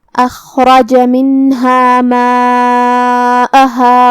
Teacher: کلمت ماءها میں یہاں مد واجب متصل ہے. مد واجب متصل میں ہم اپنی آواز 4 مد کے برابر لمبی کریں گے جو کہ حمزہ پہ اور ہا پہ زبر ہے تو یہ سب حرکات کا دھیان رہے.